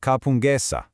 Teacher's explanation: When it goes plural, that K right in the middle softens into a G.